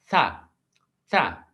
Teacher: डेंटल्स, डेंटल्स में क्या कमाल होता है, यहां पर यानी आप टंग को यूज करते हैं टीथ के साथ, टंग और टीथ का कमाल होता है डेंटल्स में, ठीक है। These sounds are formed with the tongue tip behind the upper front teeth · आपकी जबान की जो नोक है अपर टीथ और लोअर टीथ जो है उनके बीच में लेकर आएंगे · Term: dental sound